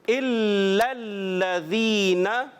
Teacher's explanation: تو ہم نے تشدید کو باقی رکھنا ہے، اچھے انداز سے رک کر ادا کرنا ہے